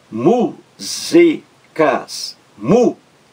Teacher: Ouvindo músicas, a palavra músicas, mu-zi-cas, mu-zi-cas, três sílabas. A sílaba mais forte é a primeira logo aí, da esquerda para a direita, a primeira, a antepenúltima sílaba. Então veja, mu-zi-cas, a última sílaba, cas, a penúltima, zi, mu-zi, e a antepenúltima, mu.